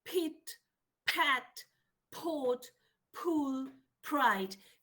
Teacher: they also have aspiration apart from a explosion